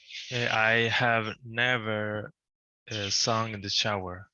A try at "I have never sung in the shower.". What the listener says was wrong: Perfect. Let's pay attention to the pronunciation of this because it is considered a schwa.